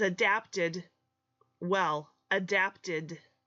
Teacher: you add an extra syllable because there's a T at the end of adapt and not the letter T just the sound T adapted well